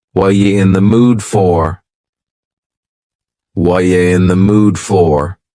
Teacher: the word r is gone and the word you has been reduced to yah so when we link together what and you super fast what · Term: reduction